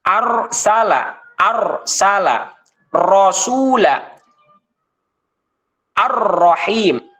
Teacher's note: kalau melafalkan huruf ro itu kalau sifat takrir itu dia maksimal dua kali saja